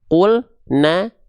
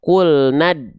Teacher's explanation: Maka matobi'i yang berjumpa setelahnya ada sukun atau tanda mati, matobi'inya gagal aktif, nggak dibaca 2 harokat, cukup dibaca 1 harokat saja